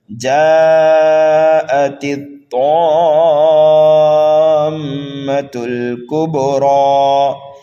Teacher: حرف تا کو طا میں ملانا ہے · یہاں پر ایک قاعدہ ہمیں سمجھنا ہے، الف مدہ کے بعد میں سکون لازم آنے کی وجہ سے یہاں پر جو مد ہوگا وہ مد لازم ہوگا، اور مد لازم کو 3 الف کے برابر کھینچ کر کے پڑھا جاتا ہے۔ یہاں پر میم مشدد ہے اس لیے غنہ کر کے پڑھیں گے، تا کو لام میں ملائیں گے، کاف کو با میں ملائیں گے، یہاں پر قلقلہ ہوگا اس لیے کہ با حروف قلقلہ میں سے ہے۔ · الف مدہ کے بعد میں جو ہے حمزہ آ رہا ہے، اس لیے یہاں پر مد متصل ہوگا · را کے اوپر کھڑا زبر ہے، را کو کھینچنا ہے اور را کو پر بھی پڑھنا ہے